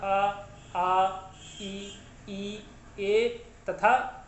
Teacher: ऐसे स्वर वर्ण आते हैं जिनके उच्चारण में हमारे ओंठ की आकृति गोल नहीं होती, यानी अर्थात वृत्त जो है नहीं बनता। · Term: अवृत्ताकार